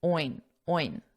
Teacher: a very nasal sound, kind of like a pig makes